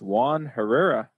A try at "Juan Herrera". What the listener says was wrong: Yes, we don't say it, so the actual way will be Juan Herrera.